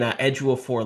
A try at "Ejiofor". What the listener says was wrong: it's Edgeofor, Edgeofor. I've heard people say that too, but it's like Edgeofor. You just don't pronounce the O.